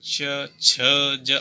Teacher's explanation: स्पर्श करने में जीव को संघर्ष करना पड़ रहा है थोड़ा सा, बिल्कुल डायरेक्ट टच नहीं हो रही है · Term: स्पर्श संघर्षी